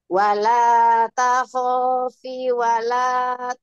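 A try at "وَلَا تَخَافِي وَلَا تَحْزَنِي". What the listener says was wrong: Fi-nya panjang. Wala takhafi wala tahzani.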